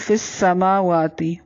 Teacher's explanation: فا کو سین کے ساتھ ملاتے ہوئے باریک پڑھنا ہے میم اور واو کو لمبا کرنا ہے · اس کو تھوڑا سا کھینچ کر پڑھنا ہے من فی السماوات نون ساکن ہے یہاں پر اخفا ہوگا نرمی سے غنہ کریں گے اس کو اخفا کہتے ہیں اخفا مع الغنہ من فی السماوات